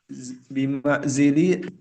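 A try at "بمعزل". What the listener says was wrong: Ditanwinkan ya, bima'zilin.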